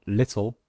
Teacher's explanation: in the word little the L Sound is in fact a new syllable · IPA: /ˈlɪt.l̩/